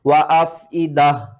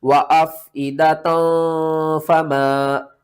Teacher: وقف کی صورت میں ہا پڑھا جائے گا اور وصل کی صورت میں تا پڑھا جائے گا